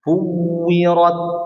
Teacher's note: Huruf waw dia. Wawnya tasydid lagi, ya. Artinya dimonyong sempurna.